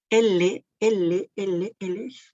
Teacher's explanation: Por eso nos dice que el cierre, L, ey, el cierre de la boca es incompleto, no se llega a cerrar con totalidad. La salida del aire es continua, pero este se desplaza por los lados de la boca, es decir, por los lados de nuestra lengua. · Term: laterales